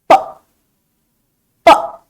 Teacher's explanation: When you say the sound, आपके दोनों lips आपस में कंबाइन होके और फिर हवा से करके खुलते हैं। प, प, गुड, वेरी वेरी गुड। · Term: P का साउंड